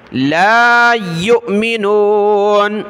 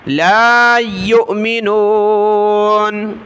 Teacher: لَا يُؤْمِنُونَ حمزہ ساکنہ جھٹکا دیا